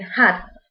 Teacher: The tongue is low and the lips are spread.